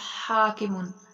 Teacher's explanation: پہلے ہم ہا کے متعلق پڑھتے ہیں۔ حاکمن، یہ جو ہا ہے درمیان والے حلق سے ادا ہوگا